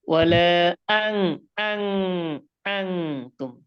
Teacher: হামজার উচ্চারণ হঠাৎ করে ওয়ালা আং তুম এরকম যেন হয়, হামজার উচ্চারণ স্পষ্ট যেন হয়।